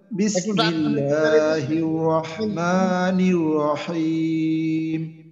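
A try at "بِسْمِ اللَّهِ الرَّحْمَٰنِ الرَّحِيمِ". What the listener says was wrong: জি মাশাআল্লাহ, টানটা একটু বেশি করে।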